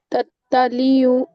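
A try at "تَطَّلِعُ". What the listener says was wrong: نہیں، تطلیع نہیں. تطلیع مطلب یہاں پہ لام کے اوپر کھڑا زر ہے، یا لام کے بعد یا ہے، تب جا کے ہم کھینچیں گے وہاں پہ. تطلیع، تطلیع نہیں. تطلیع عین سے، اور علل، علل، علا یہ ورڈ بہت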